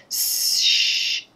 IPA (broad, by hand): ʒ